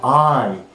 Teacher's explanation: from this position the tongue is gliding towards the E position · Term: closing diphthong